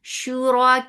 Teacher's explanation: So you are not making making any sound long. This is Hamza with Dhamma, so the sound is short and sharp.